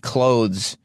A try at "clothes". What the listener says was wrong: You're not supposed to say the TH in clothes. No, you don't say clothes. Clothes. You don't say clothes.